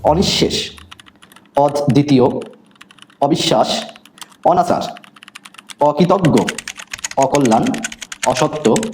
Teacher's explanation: প্রত্যেকটি অ নাবোধক অর্থাৎ বিপরীত অর্থ দিয়েছে এইজন্য প্রত্যেকটি অ বিবৃত হয়েছে